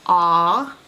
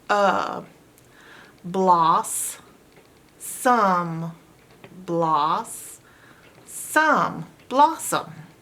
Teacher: the first o makes its normal short sound ah but the second o makes a schwa sound